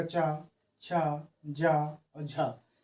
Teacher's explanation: इनके उच्चारण में मुख द्वार को बंद करके इस प्रकार खोलते हैं कि जो हवा है वो उच्चारण स्थान को रगड़ते हुए बाहर निकलती है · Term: स्पर्श संघर्षी